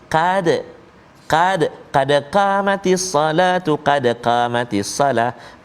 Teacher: qad huruf Qaf baris atas, maka teballah kita baca. Qad, jangan kita baca tipis.